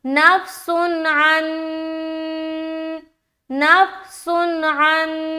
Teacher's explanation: नून की आवाज को जाहिर करेंगे और जल्दी पढ़कर निकल जाएंगे, यहाँ पर रुकावट नहीं करनी। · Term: इजहार